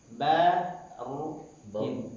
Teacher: Roknya tebal, ba-nya jangan tebal.